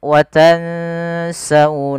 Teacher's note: Apabila ada nun mati bertemu dengan huruf Sin ini kita namakan dengan bacaan Ikhfa